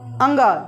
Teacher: अनुनासिक है यानी यानी मुख और नाक दोनों काम करता है